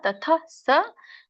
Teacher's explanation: ಹ ಕೇಳಿಸಬೇಕು ಬಟ್ ಪೂರ್ಣ ಅಲ್ಲ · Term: ವಿಸರ್ಗ